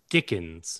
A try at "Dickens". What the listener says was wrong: You don't need to pronounce his name like it's a disease.